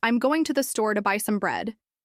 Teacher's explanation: The words going, store, and buy are stressed because they carry the main meaning of the sentence. The other words like I'm, to, and some are unstressed.